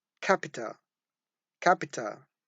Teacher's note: Yes, we have aspiration at the beginning of the word, capital.